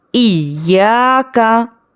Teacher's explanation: या पर सख्ती करना है और फिर या को थोड़ा खींचना है।